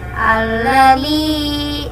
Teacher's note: Yang pertama yaitu adalah alif lam syamsiah karena huruf alif lam bertemu huruf syamsiah lam, dibaca idgham masuk ke huruf lam